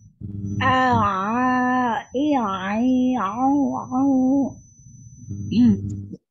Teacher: Bunyinya jangan ke hidung, huruf ain, ya. Ya. Rongga mulut dari tenggorokan langsung mengalir ke rongga mulut, enggak mampir ke rongga hidung.